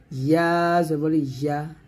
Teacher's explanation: জিহ্বার মধ্যখান উপরতলের সঙ্গে লাগিয়ে বলতে হবে